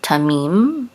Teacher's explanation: Accent is on the last syllable, tamim.